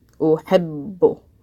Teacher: Ba is a little bit difficult when it has shadda because it's a little bit difficult to stress a letter that you're making with your lips. Uhibbu. Now, the second time I pronounce the ba, I'm pronouncing it bu.